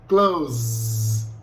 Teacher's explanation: Som de Z, close. O E do final não é produzido. Você para no som de Z